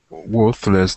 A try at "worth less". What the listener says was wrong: You know, there's an interesting reading problem with pronunciation here because there is a word, worthless. Yeah, so we have to be careful when we say worthless. There's some tricks in English like this, so you have to be careful that you don't confuse people to say to sound like you are saying the dollar was worthless.